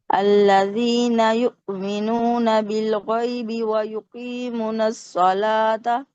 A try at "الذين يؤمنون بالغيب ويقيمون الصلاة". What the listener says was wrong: हाँ जी, यहाँ पे थोड़ी सी मिस्टेक हुई है, वाव मद्दा ड्रॉप हुआ है। वयुकीमून अस्सला, मीम के बाद वाव है। वयुकीमून अस्सलात,